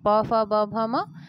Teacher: ब ध्वनि ओष्ठ में आती है।